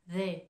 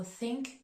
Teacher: le premier mot en th the c'est une prononciation qui va mobiliser les cordes vocales tandis que le mot think c'est un TH un peu plus doux